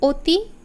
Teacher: অতি এখানে কিন্তু চোয়ালটা কম প্রসারিত হয়েছে এবং ঠোঁট অপেক্ষাকৃত বেশি গোলাকার হয়েছে এই অতি যে অখানে অ এর উচ্চারণটা হয়েছে যেন এটা অনা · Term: সংবৃত উচ্চারণ